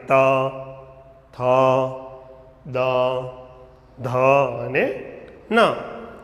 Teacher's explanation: જીભ દાંતને અડે એટલે કે સ્પર્શ કરે છે।